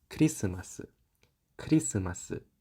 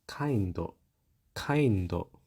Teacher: For the most part, these sounds in Japanese are quite similar to its English counterparts. However, in English, the K can be aspirated. In Japanese, such aspirations do not exist.